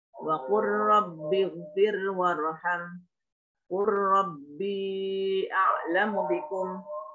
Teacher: Ketemu lamnya kul ketemu dengan ro. Wa qur rabbighfir warham. Qur rabbi a'lamu bikum. Nah, itu semuanya dibaca idgham oleh seluruh imam qiraat 7.